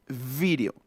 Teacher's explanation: Observen, es una pronunciación labiodental así. Dientes superiores, labio inferior, labiodental